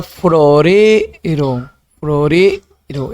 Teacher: Y la palabra florero, florero, en ere se detiene y se prolonga con mayor intensidad, florero. Entonces tenemos la sílaba tónica, en este caso, trompeta en P, llegar en gar, mitad en tac y florero en ere.